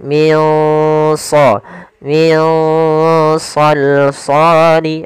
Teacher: Shad termasuk huruf yang tebal dan huruf Istia maka dia samarkannya agak ditebalkan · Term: ikhfa